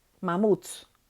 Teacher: la fuerza de voz está en la última sílaba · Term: palabra aguda